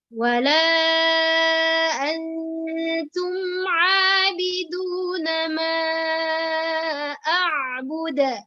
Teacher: Jadi a'bud harus kolkolahnya harus jelas ya. Karena kolkolah itu ada dua.